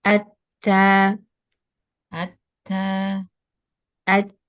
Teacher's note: menempel di pangkal giginya lemah jangan terlalu ditekan jadi suaranya tertahan ketika dilepas udaranya lewat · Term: hamsnya